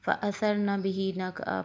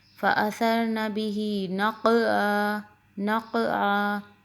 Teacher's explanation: قاف موٹا قلقلہ بھی ہوگا، اور حلق سے بھی آواز آئے، عین بھی حلق سے ادا ہوگا۔ نقعا کہیں گے تو یہ الف بن جائے گا، اس لیے آپ نے پڑھنا ہے نقعا۔